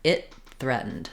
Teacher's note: what I'm going to do is use an unreleased T here it threatened so I'm going to make a stop for the · I'm going to make a stop for the T, it, and I'm just going to release right into the TH. The challenge, or the way to make this less challenging, if I do it with my tongue tip up and then I have to move to threatened with my tongue tip between my teeth, it's going to be too slow and too long of a pause.